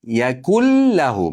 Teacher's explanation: Yakun, nunimiz lamni ichiga ketadi. G'unnasiz, idg'om. Yakullahu, mana go'yoki bu nun yo'g'idek.